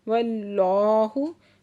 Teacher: इसमें जलाला से पहले ज़बर है तो इसमें जलाला को पुर करके पढ़ेंगे और खड़ा ज़बर भी है, 2 हरकत खींच के पढ़ेंगे। · یہاں پہ اقلاب ہو رہا ہے، اس کو تنوین کو میم میں بدل کر اور میم میں غنہ کر کے ہم نے پڑھنا ہے